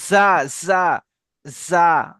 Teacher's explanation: একটু সিটি দিয়ে হবে, যাই উচ্চারণ হবে